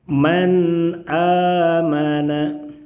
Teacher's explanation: Nun sukun pada kata man dibaca jelas karena bertemu dengan huruf hamzah. A hamzahnya tampilannya adalah tampilan huruf alif.